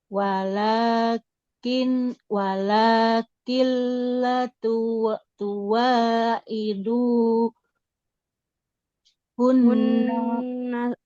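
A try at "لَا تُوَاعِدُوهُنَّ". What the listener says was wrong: Hunna, nunnya nggak boleh panjang.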